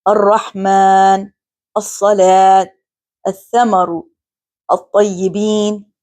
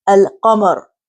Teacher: the letter lam is assimilated in the Shamsi letter, and therefore lam is not pronounced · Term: huruf al-shamsiyya